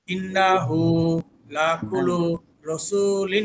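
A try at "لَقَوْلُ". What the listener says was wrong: না, লাকুলু না, এখানে লাকাউলু।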